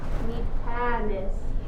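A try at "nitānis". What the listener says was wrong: Okay, don't forget ne.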